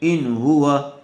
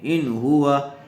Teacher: نون ساکن کے بعد حروف حلقی میں سے ہا آیا ہوا ہے، اس لیے بغیر غننے کے جلد اظہار کر کے پڑھیں گے